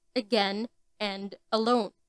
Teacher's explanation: the second symbol is unexempted in the words again and alone notice that a sound at the beginning of these words is kind of dropped though we can still hear the ah sound it is clear that it is not the stressed sound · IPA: ə